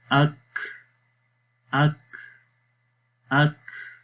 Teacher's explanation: اک اک اک، تو آخر میں دیکھیں کاف کی آواز سانس یعنی کہ جاری ہو رہا ہے، یہ ہمس ہے۔